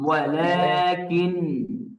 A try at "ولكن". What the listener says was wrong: মুখ খুলে গেছে, ওয়ালা হয়ে গেছে।